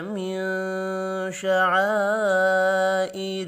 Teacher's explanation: نون ساکن کے بعد شین ہے، اخفاء حقیقی ہوگا